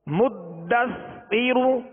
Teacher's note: دال حروف قلقلہ میں سے مشدد ہے، لہذا خوب جماؤں کے ساتھ اور سا کو نرمی کے ساتھ پڑھیں گے